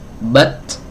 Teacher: kalau dilepas muncul hams